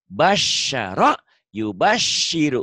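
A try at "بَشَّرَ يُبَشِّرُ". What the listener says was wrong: Ulang sinnya belum keluar yang pertama.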